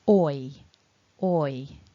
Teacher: it starts in a rounded shape the same shape as the or but then towards the end of the sound we widen the mouth bring the corners of the mouth back towards the ears so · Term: double vowel sound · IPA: ɔɪ, /ɔɪ/